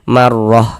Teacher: Maka huruf ro dibaca tebal dibaca takkhim. Sehingganya pengkalisan kita naik terangkat ke atas ketika kita mengucapkannya.